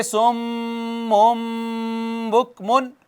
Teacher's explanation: اب یہ سم من بکمن کی بجائے ہو گیا سم مم، یہ میم بن گئی۔ یہ جو اس کے اندر نون تھا نا تنوین کا، وہ میم سے اقلاب ہو چکا ہے اس کا۔